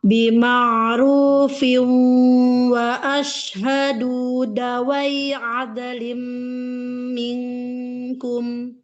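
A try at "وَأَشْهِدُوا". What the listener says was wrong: Perbaiki harokat wa ashhidu.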